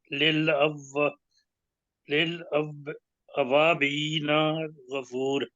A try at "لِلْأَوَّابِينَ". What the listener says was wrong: اوابین، الف ہے نا، للأوابین۔